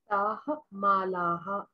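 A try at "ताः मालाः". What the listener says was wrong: तो अब ये जो माला हा, जो हम हा पे भी आ की मात्रा लगाते हैं ना, उसको कम करना होगा क्योंकि विसर्ग पे मात्रा नहीं है।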